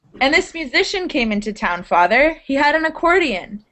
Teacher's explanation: I'm saying that you're excited when you've got those exclamation marks. Your entire pitch, your pitch raises up like a whole step.